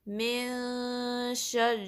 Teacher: میم کی جو کسرہ ہے اس کو نون سے ملانا ہے، نون کے بعد شین ہے تو اس میں نون کی آواز کو ہم ناک میں تھوڑی دیر چھپائیں گے